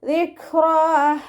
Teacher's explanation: റ ഫതഹയാണ്, ഉയർത്തി ഉച്ചരിച്ചു കൊടുക്കുക. · കാഫ് കൽക്കലയുടെ ലെറ്ററില്ലാത്തത് കൊണ്ട് ഹാഫ് സുക്കൂന് കൊടുക്കുക. കാഫിന് സുക്കൂനാവുമ്പോൾ കുറച്ച് എയർ പാസ് ചെയ്യുന്ന സൗണ്ടിൽ വേണം ഉച്ചരിക്കാൻ